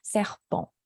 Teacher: Like the tongue doesn't hit the roof of your mouth for the N sound. Serpent, not serpent, but serpent, like your tongue is separate from the roof of your mouth. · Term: nasal sound